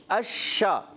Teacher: اب شین میں ایک تفشی صفت ہوتی ہے, اس میں آواز آتی ہے اشا